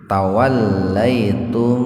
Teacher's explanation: Tawallaitum idhar syafawi, mim sukun ketemu dengan fa secara terpisah, maka mimnya dibaca jelas di bibir